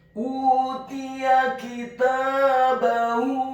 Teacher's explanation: Utiya kitabahu, kata kitabahu, huruf kafnya dibaca tipis kasrah satu harokat, huruf ta-nya dibaca tipis fathah dua harokat karena setelahnya ada alif. Kemudian huruf ba-nya dibaca tipis fathah satu harokat dan huruf ha-nya dibaca tafkhim tebal dhammah dua harokat karena harokat dhammahnya adalah harokat dhammah yang terbalik.